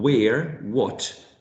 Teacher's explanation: it's a bilabial sound, right? And there's very little obstruction, almost none, right? No obstruction. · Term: semi-vowels or glides